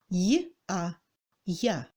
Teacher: Le ya signifie deux sons, yod, i bref, A. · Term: iodisé